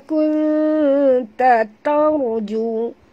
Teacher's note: Ra bila dia mati huruf sebelumnya baris atas kena baca tebal